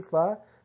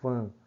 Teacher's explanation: fá, seria oral, mas você fala fã. Até você sente a nasalização